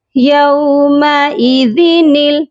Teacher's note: یومئی، ذال زیر دی، یومئذ، نون لام زیر نل، یومئذ نل، نون کو لام کے ساتھ ملا کر پڑھیں گے، درمیان میں خالی الف ہے، ہم اس کو نہیں پڑھیں گے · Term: نون قطنی